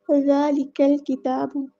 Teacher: ذالک الکتاب، ذال کو ہم نے باریک سافٹ لیٹر ہے، یہ نرمی سے ادا کرنا ہے۔ قاف کو ہم لام کے ساتھ ملا دیں گے تو ہمارا حمزۃ الوصل ڈراپ ہو جائے گا، اور یہاں پر جو ہے لام کو ہم ظاہر کر کے پڑھیں گے کیونکہ لام قمریہ ہے۔